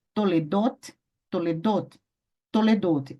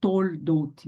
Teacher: Uma letra com o Shivá, ó. Então, Shivá, após uma vogal longa, ele será vocálico, será vocálico